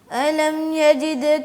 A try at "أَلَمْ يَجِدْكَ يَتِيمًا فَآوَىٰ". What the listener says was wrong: حمزہ کو ظاہر کر کے پڑھیں. علم بھی نہیں پڑھنا جیسے یہ